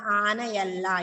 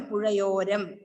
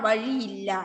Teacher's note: ആ ഇ എ എന്നീ താലവ്യ സ്വരം കഴിഞ്ഞ് സ്വരം വന്നാൽ യ ആണ് ആഗമമായി വരിക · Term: ആഗമസന്ധി